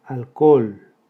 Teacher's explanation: Hiato entre dos vocales iguales, la O también. La sílaba tónica es la última